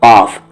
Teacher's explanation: قاف زبان کی جڑ تالو کے نرم حصے سے ملائیں گے، یعنی جو اوپر والے تالو ہیں اس کے نرم حصے سے ملائیں گے، سخت سے نہیں نرم سے.